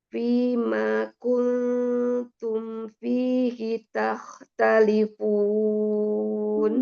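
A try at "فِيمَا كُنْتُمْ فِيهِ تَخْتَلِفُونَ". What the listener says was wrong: Belum, Umi baru madnya fi, manya belum mad. Fima kuntum fihi takhtalifun.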